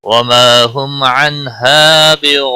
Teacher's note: وما الف مدہ ہے ایک الف کے برابر کھینچ کر پڑھیں گے. ہم میم ساکن کے بعد عین آیا ہے، اظہار شفوی ہوگا، غنہ نہیں کریں گے